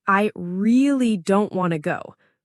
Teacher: the word really is stretched and emphasized